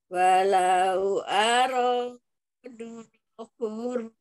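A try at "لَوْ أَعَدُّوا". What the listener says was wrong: La-nya pendek ya. La'adu, tidak dibaca panjang.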